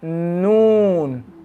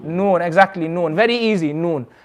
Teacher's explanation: Noon is when the edge of the tongue touches the gums of the top teeth from canine to canine. So for noon, the tongue is going to be more up.